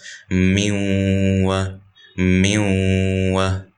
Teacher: Min wa becomes waw mushaddada. The first waw, which is sakina, has غنة. The next waw, which is mutharrika, is going to be without غنة. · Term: Idgham